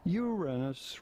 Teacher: it is preferable to stress on the first syllable when you say it rather than on the second one